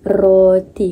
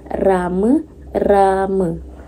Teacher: Yang pertama ialah hujung lidah akan berada di belakang alveolar dan yang kedua udara akan ditolak keluar dan akan berlakunya getaran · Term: konsonan getaran R